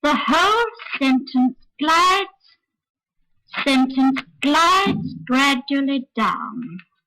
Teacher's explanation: It's just a little trick we have for modifying the glide down in a longer sentence than usual, when there are 5 or 6 or 7 stressed syllables. We start off quite normally on a high note, and the second stressed syllable, sentence, is on a lower note, just as it is in the ordinary glide down.